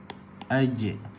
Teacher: Lagi langsung tak boleh nak panjangkan. Langsung tertahan. Sebab jim tu bersifat dengan syiddah.